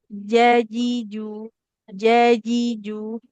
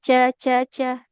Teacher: tengah lidahnya itu memang menekan karena sifatnya syidah, tertahan aliran suara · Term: huruf Jim